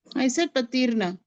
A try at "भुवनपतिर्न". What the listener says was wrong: No, again you're saying patir. Patir.